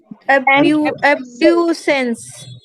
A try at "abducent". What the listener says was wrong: इसमें ऐसे नहीं होना चाहिए, मुझे लगता है टी होता है इसमें। एब्ड्यूसेंट, एब्ड्यूसेंट।